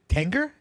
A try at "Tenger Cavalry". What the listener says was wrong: No, it's a T. It's not an N. It's a T. Tenger Cavalry.